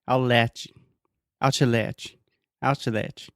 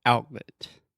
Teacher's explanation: So you're almost making a T sound. Your tongue, everything is in position to make the T sound, and then you just don't quite do it. Your throat stops you, and we just say outlet. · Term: glottal T